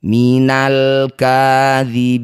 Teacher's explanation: disebut bacaan namanya izhar qamariyah. Lam sukunnya baca dengan jelas.